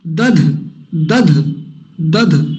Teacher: पहला अल्प प्राण, दूसरा महाप्राण, पहला डी, दूसरा डी एच, है ना, डी एंड डी एच, तो वो पूरा आना चाहिए दोनों का उच्चारण, दध, दध।